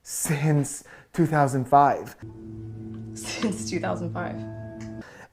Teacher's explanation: that giggle that pause with that kind of breathy chuckle as you're speaking